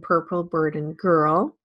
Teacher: Webster uses this schwa to represent the long stressed central vowel that occurs in purple burden girl